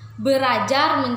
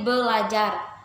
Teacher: Kata bahasa Indonesia belajar berasal dari penggabungan prefiks ber dan bentuk dasar ajar, mestinya kalau tidak ada perubahan menjadi berajar. Tetapi karena ada dua bunyi R, maka R yang pertama diperbedakan atau disimilasikan menjadi L, sehingga menjadi belajar